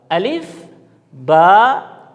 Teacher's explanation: تو جب ہم نے با ادا کرنا ہے تو تری والا حصہ آپس میں ملے گا. دونوں ہونٹوں کا تری والا حصہ جب آپس میں ملے گا تب اس سے با ادا ہوگا